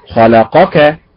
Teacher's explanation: خلقك فتنطق متعل والنبر فيها على حركة الخاء